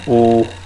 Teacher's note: होठ मुड़ रहे ना, ओ, मुंह गोल बना रहे हो आप